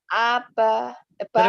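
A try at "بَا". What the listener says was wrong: Terbalik, terbalik. Baa, bukan apa.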